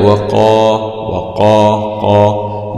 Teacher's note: واو فتح واو، قاف فتح قا، وقا، ومعلوم أن القاف هنا في أعلى درجات التفخيم لأنها مفتوحة وبعدها ألف. ألف سكون، ألف سكون مع مد طبيعي مع التفخيم لأن الألف جاء بعد حرف مفخم، والحرف يتبع ما قبله من حيث التفخيم والتركيك.